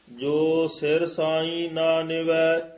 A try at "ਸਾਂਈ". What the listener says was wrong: ਇੱਥੇ ਬਿੰਦੀ ਆ ਗਈ ਹੈ। ਇੱਥੇ ਸਾਈ ਉਚਾਰਨ ਕਰਨਾ, ਸਾਂ ਤੇ ਬਿੰਦੀ ਲਾਉਣੀ ਹੈ, ਈ ਤੇ ਨਹੀਂ ਲਾਉਣੀ। ਜੋ ਸਿਰ ਇੱਥੇ ਠਮਕ ਲੱਗ ਜੇਗੀ। ਸਾਈ ਨਾ ਨਿਵੈ।